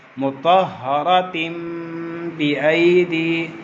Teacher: تنوین کے آگے حرف با تھا تو ہم نے تنوین کی آواز کو میم سے بدل دیا